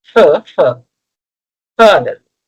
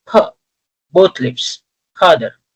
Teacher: While this h sound is not actually used in this position in English they normally say f. Lower lip will touch upper front teeth